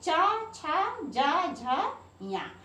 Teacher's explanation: चवर का ये चा, छा, जा, झा, या। तो चा, छा, जा, झा, या, ये इनका उच्चारण स्थान तालु या तालव्य है। और या जो है इसका उच्चारण स्थान ताल भी है और नासिक भी है।